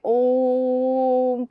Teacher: लंबा जो जाता है, सबसे अधिक समय जो लगता है वो हमारा प्लुत स्वर होता है